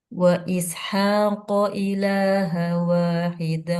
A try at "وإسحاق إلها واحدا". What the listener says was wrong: Han wa tanwin ketemu waw. Tanwin ketemu waw hukumnya. Ya nun mim waw hukumnya. Ya, cara bacanya gimana? Kalau lupa nama hukumnya cara bacanya gimana? Ya, dan didengungkan. Lebur dan dengung.